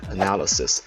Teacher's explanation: analysis has 4 syllables, so its stress is shifted from the first syllable to the second one